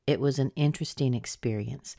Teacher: experience is our noun. That's where we get the most stress. So that's where the strongest pitch will be. And then the word interesting is stressed as well.